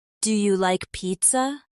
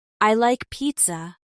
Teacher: when you ask a yes or no question in English, your voice often goes up at the end